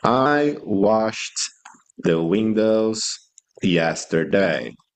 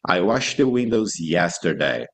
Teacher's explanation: It has a T sound. The ed here sounds like a T. And the next word starts with another T. So we connect the two T's. · it's going to sound like the present because we connect the T's and we pronounce once.